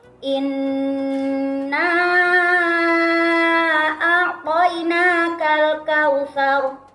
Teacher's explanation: Bacaan gunnah ada di depan sendiri, yaitu nun bertasydid. Inna dibaca mendengung selama 1,5 alif atau 3 harokat.